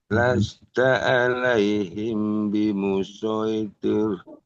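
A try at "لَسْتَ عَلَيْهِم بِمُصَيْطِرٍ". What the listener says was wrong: Himnya ditahan. Kayak gini. Lasta alaihim bimusoy. Tahan dulu M-nya.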